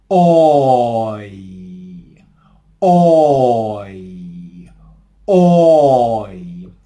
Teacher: So in the word toy, as in toilet, we want to start with our lips in a rounded position, almost like in the word hot, and we transition to the E vowel sound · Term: smiling diphthongs